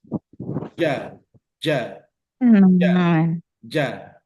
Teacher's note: makhrajnya itu menyentuhkan bagian tengah lidah itu ke langit-langit bagian atas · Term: huruf Jim, huruf jim